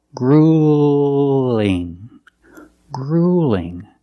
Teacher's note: Use the long oo, and when it links to the light L, it sounds a little different.